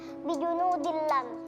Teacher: idgham bila ghunah. Karena ada kasrahtain yang bertemu dengan huruf lam.